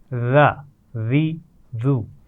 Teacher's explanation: ذال کا مخرج ہے زبان کی نوک اور اوپر والے سامنے کے دانتوں کی نوک